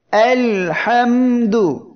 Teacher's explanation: এখানে মিম অক্ষরটি উচ্চারণের সময় আওয়াজটা একেবারে বন্ধ হচ্ছে না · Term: তাওয়াসসুত